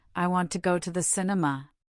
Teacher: The words want, go, and cin- in cinema are stressed. · They are the content words, the verbs, nouns, adjectives, and adverbs that carry the core meaning. The little words like to and the become weak and fast. We almost swallow them. In fact, to and the often become just a quick ta and the sound. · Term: natural sentence stress